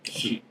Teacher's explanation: that's that little glottal stop at the end there